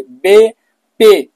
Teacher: देखिए तो दोनों होठ मिलते हैं, उसको दो लबी कहते हैं